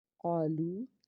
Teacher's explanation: قاف کو پر پڑھیں گے کیونکہ حرف مستعلیہ کا حرف ہے، اس کے بعد الف ہے، الف سے پیچھے زبر ہونے کی وجہ سے اس کو ایک الف کے برابر کھینچیں گے، لام واو پیش لو، واو ساکن کے بعد پیش ہونے کی وجہ سے ایک الف کے برابر اس کو بھی کھینچیں گے۔